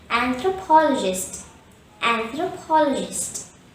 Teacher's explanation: the word anthropologist has five syllables and thra paul a gist the stress is on the third syllable · The stress is on the 3rd syllable pol. And there are 2 schwas in this word.